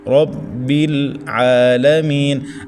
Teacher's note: را زبر کی وجہ سے موٹا پڑھیں · بل یہ لام ساکن ہے، اس کے اوپر قلقلہ نہیں کرنا